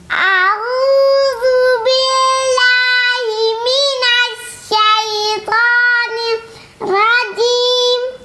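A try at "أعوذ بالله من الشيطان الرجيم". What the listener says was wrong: निर्रजीम। जीम रजीम ऐसे नहीं, साकिन को हिलाना नहीं, आखिर में वो ना नहीं करना है। रजीम मिनश शैतानिर रजीम।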